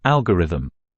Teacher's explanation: The stress is put on the first syllable, and thus the O in the second syllable is weakened to a schwa sound.